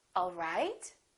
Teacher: now if this is a question I would say it differently the word right the pitch would go up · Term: rising intonation